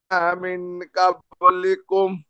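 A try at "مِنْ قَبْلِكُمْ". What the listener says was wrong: ক্বাবলিকুম, কফ দিয়ে, বড় ক, ক্বাবলিকুম, মিন ক্বাবলিকুম, ওকে?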